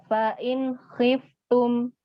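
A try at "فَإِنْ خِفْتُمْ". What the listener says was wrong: Nah, kurang mengalir. Fa'in khiftum. Khiftum. Hati-hati. Makhrajnya huruf fa. Bukan di dua bibir, tapi perut bibir bawah yang dalam dengan ujung gigi seri yang atas. Jadi bibir dengan gigi, bukan dua bibir. Maka seperti ini. Af, bukan af, ya.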